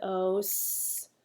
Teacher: Sometimes that S sounds like a Z in those